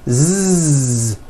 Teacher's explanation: you just added voicing what would the s sound become it would become a z sound z z so s has no voicing z has voicing z